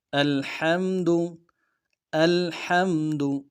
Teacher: الحمد ہا کو گہرائی سے ادا کرنا ہے